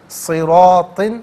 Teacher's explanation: صراطن میں را پر زبر ہے، را کو پر کر کے پڑھیں گے، اور ناظرین الف مدہ ہے، 2 حرکت کی مقدار یعنی 1 الف کی مقدار کھینچ کر پڑھا جائے گا۔